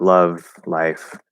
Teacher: it's at the start of a syllable like love life it's gonna be a full l